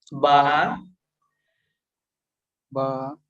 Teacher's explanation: বাটা উচ্চারণ হবে আপনার দুই ঠোঁট থেকে, ঠোঁটের ইয়ে থেকে বার উচ্চারণটা হয়।